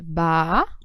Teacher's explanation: É a última sílaba é tônica. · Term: oxítona